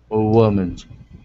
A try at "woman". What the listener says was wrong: Okay, now be careful. You're adding a T sound at the end of the N. You're saying woman with the T sound. End on the N.